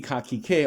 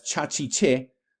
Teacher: only in this case we have the velar becoming a palatal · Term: Palatalization